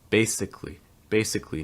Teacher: Notice that that second A is not usually pronounced. It's going to go right from that C to the L sound.